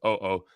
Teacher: each vowel is pronounced separately